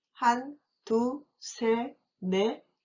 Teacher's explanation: 하나 is shortened to 한, and the final consonants of 둘, 셋, 넷 are dropped.